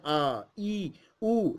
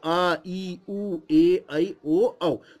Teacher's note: आ बोलेंगे तो ज्यादा समय लगेगा और ज्यादा एनर्जी मुंह से निकलती हुई दिखेगी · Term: दीर्घ स्वर